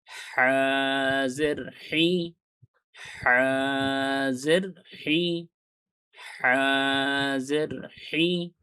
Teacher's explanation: হার উচ্চারণটা আপনারা গলার ভেতর থেকে করবেন।